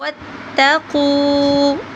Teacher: قاف کو موٹا کر کے پڑھیں گے اور تھوڑا سا لمبا کریں گے